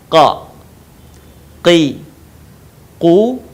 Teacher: huruf ini keluar dengan menyentuhkan pangkal lisan kita dengan langit-langit bagian belakang perhatikan Q Qi qu dalam posisi mati maka terdengar suaranya memantul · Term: huruf q, huruf Qa